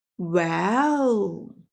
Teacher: The third tone, falling down and then rising up, like, well, a thinking sound.